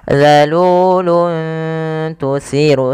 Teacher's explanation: Pada lafal luntu di sini ada dhammatain bertemu dengan huruf ta, maka cara membacanya samarkan suara tanwinnya kepada huruf ta, bukan zalulun tusiru, tapi zalulun tusiru, yaitu menyamarkan suara tanwinnya atau suara nunnya dirubah kepada huruf ta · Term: ikhfa